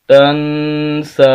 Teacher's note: تا کو نون کے ساتھ ملائیں گے، نون ساکن ہے، غنہ ہوگا، ناک میں آواز جائے گی، تا زبر نون تن، سین کھڑی زبر سا، تنسا، وقف میں بھی تنسا۔